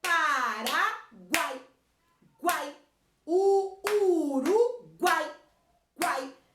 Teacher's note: Eu tenho uma vogal forte, uma semivogal e uma semivogal. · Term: tritongo